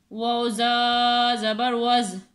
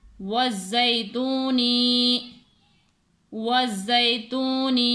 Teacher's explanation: ज़ा को यहाँ पर सीटी की आवाज़ आ जाती है, यहाँ पर सीटी की आवाज़ आनी चाहिए और सख्ती से ज़ा यहाँ पर पढ़ी जाती है।